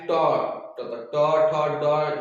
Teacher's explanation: ट ठ ड जब ऐसे पढ़ेंगे तो इसको हम लोग कह देंगे मूर्धा। क्या कह देंगे इसको, मूर्धा के द्वारा इसको बोला जाता है।